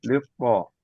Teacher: lam syamsiyah mudghama fi ta'il maftuha